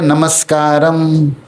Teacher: अब आप शब्द बोलिए नमस्कारम। तो उसमें नमः के आगे जब कार शब्द आया लास्ट में तो वह जो विसर्ग था वह आधा स का रूप ले लिया।